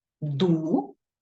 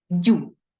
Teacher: приголосні перед звуком ю вимовляються м'яко